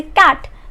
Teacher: Let's say कैट, तो आवाज़ कहाँ से आई? गले में से आई, क की आवाज़ आई